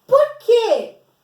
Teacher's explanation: Tá no final, tá pertinho ali do ponto de interrogação, é o porquê com acento, porque ele tem uma entonação. Por quê? Ele tem um som mais forte, ele é mais tônico